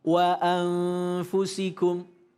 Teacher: nun mati bertemu fa pada lafal anfusikum mengeluarkan huruf m yang tidak tertutup bibir rapat. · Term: ikhfa